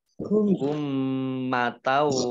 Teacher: mim tasdid dibaca mendengung atau gunah, ditahan 2 harokat